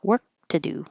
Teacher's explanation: You won't hear the K.